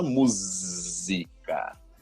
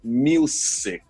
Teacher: Nessa palavra music é o caso. Então, em português a gente fala música, o som de Z. Em inglês é o som de S, então fica music.